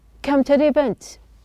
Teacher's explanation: the T is pronounced as a flap.